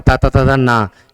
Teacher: ता वर्ग का कोई भी अगर वर्ण होगा वो दंत से बोला जाएगा